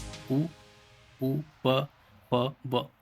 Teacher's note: जब इनका जब उच्चारण किया जाता है तो ये सभी जो है होठों से बोले जाते हैं, मतलब होठों से बोले हुए वर्ण, इसलिए इन्हें ओष्ठ वर्ण कहा जाता है।